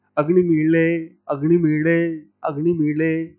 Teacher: जो ल आ रहा है वो ड़ ना तो ल है ना ड़ है